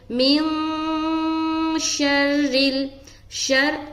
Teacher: حرف شین آ رہا ہے، لہٰذا یہاں پر اخفا کرنا ہے۔ اخفا کہتے ہیں ناک میں نون کی آواز کو چھپانا · کریں گے من شر شر، را سے ملا رہے شین کو، را کے نیچے زیر ہے تو را باریک ہوگی